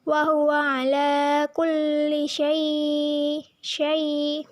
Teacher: Wa huwa ala kulli syai merupakan hukum bacaan madlin atau harf lin karena huruf ya sukun didahului oleh huruf shin berharokat fathah dibaca panjangnya 2 harokat dan dilunakkan.